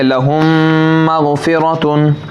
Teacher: या लहुम मग़फ़िरतुन, मीम साकिन के बाद मीम आया, क्या आया, मीम साकिन के बाद मीम, तो मीम साकिन का इदगाम होगा, क्या होगा, गुन्ना करके पढ़ेंगे। मखरज वही है, मीम साकिन का मखरज के साथ ही अदा करेंगे, जो उसका मखरज है जिस तरीके से पढ़ते हैं उसी तरीके से मीम पढ़ेंगे, लेकिन गुन्ना करेंगे।